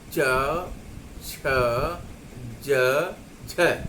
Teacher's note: च, छ, ज, झ को पहले स्पर्श संघर्षी नाम दिया जाता था, स्पर्श संघर्षी कहा जाता था। इनके उच्चारण में उच्चारण अवयव सहसा खुलने के बजाय धीरे धीरे खुलते हैं।